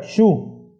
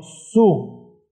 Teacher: el griego no pronuncia shu sino su